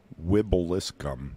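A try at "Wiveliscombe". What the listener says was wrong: No, it's a V in there. Wib.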